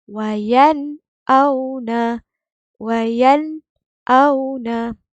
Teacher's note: Izhar halqi dibaca dengan jelas. Kita jangan dengung langsung. Okey? Maksud jelas di sini nun sakinah ni bunyi dengan jelas.